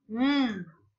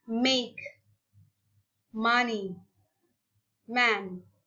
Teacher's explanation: bunyi M dengan mengatupkan kedua bibir